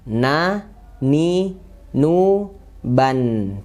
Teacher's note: mirip dengan n dalam bahasa Indonesia. Na, ni, nu, ban. Pas dia sukun ada ngalir sedikit. Di sini harokannya kasroh maka tipis dan i.